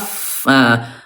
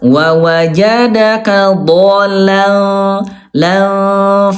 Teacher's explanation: Huruf fa af bibir dalam bagian bawah disentuhkan dengan ujung gigi atas